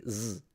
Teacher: you pronounce the zed in a fricative way